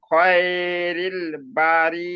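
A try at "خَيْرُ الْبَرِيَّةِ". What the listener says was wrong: রিল হবে না, রুল। র লাম পেশ রুল, আর র পেশ রু হয়, আর র লামের সঙ্গে যুক্ত করলে র লাম পেশ রুল।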